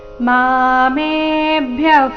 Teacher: ಮೇ ದೀರ್ಘ ಹೇಳಿ ಸೌಮ್ಯ ಆಘಾತ. ಮಾಮೇಭ್ಯಃ ಪರಮವ್ಯಯಂ ಮ ಮೇಲೆ ಆಘಾತ.